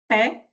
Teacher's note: nós encostamos um lábio no outro e além disso vocês observam que é uma obstrução pro paciente. Então, p, então é como se fosse uma explosão.